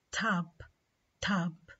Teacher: حكينا إنه aspiration مع T means إنه the T is pronounced with a strong puff of air